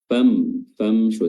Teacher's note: mim sukun bertemu dengan huruf syin di sini hukumnya adalah izhar syafawi ya mimnya dibaca izhar dibaca jelas